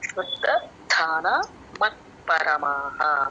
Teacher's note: పలకాలండి కొంచెం వదిలేస్తా గాలి కొంచెం బయటక వచ్చిన మహాప్రాణం వచ్చేస్తది. ఓకే శ్రద్ధ ధాన పక్కన దాకి మహాప్రాణ ఉంది మళ్ళీ మహాప్రాణ పలకాలి